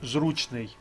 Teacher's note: на перший склад падає наголос у слові зручний